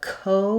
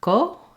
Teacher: a true ah and then their KO is going to have instead of a CO with an aspirated k sound it's going to be probably unaspirated okay um no no puff of air coming out